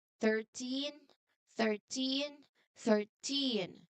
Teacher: your voice must be strong and loud enough on the last part, especially for the teen · If you say 13 with a stress on the start, people will think you said 30, which is totally a big mistake. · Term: stress on the end